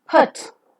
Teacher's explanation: the three-term label of the sound oo as in put is the back rounded just above the half-closed position. It also could be said as back rounded just above the half-closed position and a shorter vowel because it has got a counterpart of longer vowel. · During the articulation of this vowel, the back part of the tongue is raised to the position just above the half-closed position. The lips are rounded further. If you look at the diagram below, you could find that the back part of the tongue is raised just above the half-closed position.